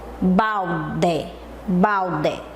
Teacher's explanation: Terminou em E, geralmente a gente fala com I, né, com o som de I, mas é o E